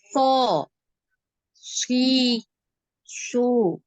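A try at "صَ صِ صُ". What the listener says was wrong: Jadi jangan ke tengah lidah ya. Jangan jangan gitu. Ya, tengah lidahnya jangan naik. Ini malah tengah lidah ini harusnya turun ya di bawah. Jadi makhrajnya kalau anti seperti itu jadi seperti huruf shin jadinya, ya. Shin. So. Jadi sama seperti huruf sin ya, yang S yang gitu ya, sin.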